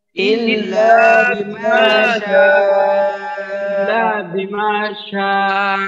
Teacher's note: আচ্ছা, এখানে কায়দা হলো তিনটা: লা এক আলিফ টান, মা এক আলিফ টান, শা চার আলিফ টান, মাদ্দে মুত্তাসিল। মাদ্দের হরফের বামে একই শব্দে হামজা।